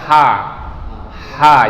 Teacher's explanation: Ha itu huruf tenggorokan bagian atas. Jadi dorong aja keluar. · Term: huruf ha